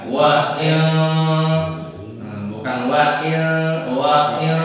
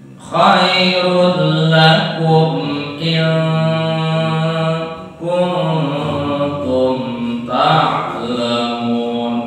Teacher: Pokoknya yang setelah ketemu kaf atau kaf suaranya agak ke eng ya.